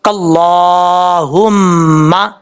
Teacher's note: یہ جس حلق سے یہ ہا ادا ہوتا ہے اس حلق کا تعلق سینے کی طرف ہے، اس لیے اس کو بھاری ساؤنڈ کے ساتھ پڑھیں گے اللہم، اس طریقے سے۔ اب میم کے اوپر شد ہے، غنہ کریں گے 1 الف کی مقدار